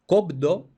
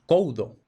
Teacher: en el español actual hemos perdido por completo esa B.